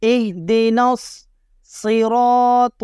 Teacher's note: را کو یہاں بھی موٹا پڑھیں گے کیونکہ را کے اوپر زبر آ رہا ہے، اور را کے اوپر زبر ہو تو را کو موٹا پڑھتے ہیں۔